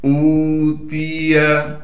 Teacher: حمزہ کو واو سے ملائیں گے اس لیے کہ واو ساکن ہے، اور واو مدہ ہونے کی وجہ سے حمزہ کو ایک الف کی مقدار کھینچ لیں گے، تا کو باریک کر کے پڑھیں گے، یا کو بغیر کھینچے پڑھنا ہے۔